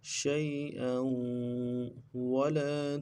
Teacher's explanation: حمزہ کے تنوین کو آگے واو کے ساتھ ملانا ہے، واو کے اوپر تشدید زور دیں گے